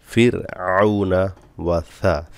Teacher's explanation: ফিরআউনা কোনো টান হবে না আইন গলা থেকে আসবে